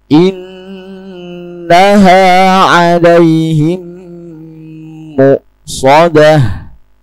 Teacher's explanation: mim mati bertemu mim. Idgham mimi yaitu dibaca dengan idgham gunnah atau dengung.